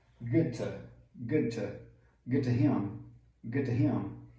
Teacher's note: E essa D vai sumir também, porque é seguido para uma som similar.